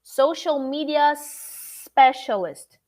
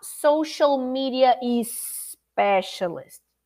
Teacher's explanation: i have to go from the ah to the s social media specialist not social media is specialist so as a